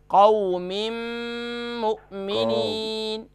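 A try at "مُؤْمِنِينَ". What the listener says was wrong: مومنین نہیں، میم کے بعد حمزہ ہے، جوائنٹ کریں گے، اس کو جھٹکا ہوگا، تھوڑا سا لگے گا، مؤمنین، مک نہیں ہے، قاف نہیں ہے، حمزہ ہے، مؤمنین۔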